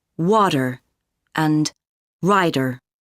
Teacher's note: In North American English, t often sounds like duh in the middle of words.